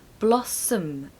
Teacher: a pronunciation tip for this one is there is a schwa on the end